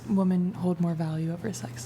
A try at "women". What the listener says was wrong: women? Women? Women. It sounds like you're saying woman. Women.